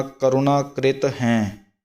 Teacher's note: ਕਰੁਣਾ ਰਾਰੇ ਦਾ ਔਂਕੜ ਜਿਹੜਾ ਹੈ ਲੱਗਿਆ, ਇਸ ਨੂੰ ਮਾੜਾ ਜਿਹਾ ਨਖੇਰ ਕੇ ਬੋਲਣਾ